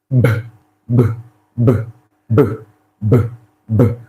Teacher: Now you notice, while you're trying to articulate, while you're articulating that sound, the vocal cord doing something like this, right? So there is a clear vibration. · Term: voiced